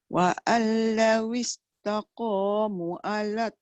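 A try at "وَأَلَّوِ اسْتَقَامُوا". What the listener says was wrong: Mu panjang. Mu ada waw. Mu tu ada waw panjang mat.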